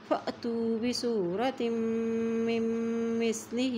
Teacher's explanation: فَأْتُوا بِسُورَةٍ تا تو زیر میم تم میم کے پشت ہے تو یہاں پہ گنہ کریں گے اور یہ آگے نون ساکن ہے تو یہ میم کے ساتھ ملے گی، میم کے پشت ہے تو یہاں پر بھی گنہ کرتے ہوئے پڑھیں گے